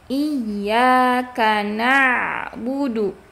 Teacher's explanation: huruf ain harus mengalir sebagian dan makhrajnya harus di tengah tenggorokan